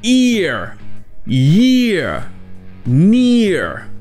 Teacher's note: quand vous avez le R après le son E, ou OU, vous aurez aussi le son du schwa juste avant le R. Donc si vous prenez par exemple les mots ear, year ou near, vous aurez le son E suivi du son E suivi du son du R.